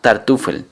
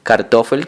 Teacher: la T progresivamente se convirtió en una K